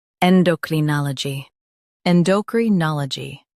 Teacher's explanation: Stress na and keep G light.